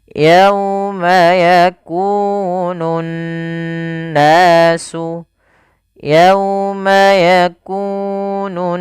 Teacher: cara membacanya adalah menahan suara n ya sepanjang dua harakat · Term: ghunnah, gunnah